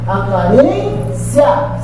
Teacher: Esse I é fraco e o A é forte.